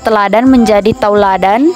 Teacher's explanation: kata teladan menjadi tauladan vokal E menjadi au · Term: diftongisasi